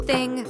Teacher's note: It's not T or D. Your tongue has to peek out. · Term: th sound